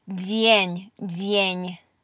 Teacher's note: this D is also being palatalized